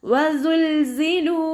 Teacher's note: സായുടെ sound അസ് എന്നുള്ളൊരു sound ഉണ്ടാകുമല്ലോ, തേനീച്ചയുടെ മുളൽ പോലെയുള്ളൊരു sound, അതാണ് കൊടുക്കേണ്ടത് കേട്ടോ.